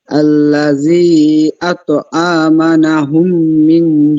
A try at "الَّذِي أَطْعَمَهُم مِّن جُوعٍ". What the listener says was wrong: না, আমানাহুম না, আমানাহুম না, আতআমাহুম, নুন নাই, এখানে নুন নাই, ঠিক আছে? আল্লাযী আতআমাহুম, আমাহুম।